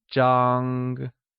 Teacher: It is pronounced with a high level tone, like zhang.